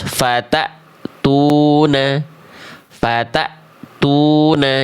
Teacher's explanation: pastikan sifat syiddah atau tertahan suara pada hamzah sukunnya ini muncul, putus hamzah sukun itu ya.